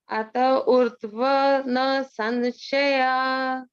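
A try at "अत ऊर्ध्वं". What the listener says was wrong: Ata urdhvam, there's a anuswara there. Ata urdhvam na samshayaha.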